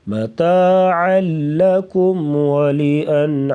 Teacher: بلا غنہ ہوگا یعنی ادغام کے ساتھ غنہ نہیں کریں گے، لام اور را میں ادغام بلا غنہ کر کے پڑھا جاتا ہے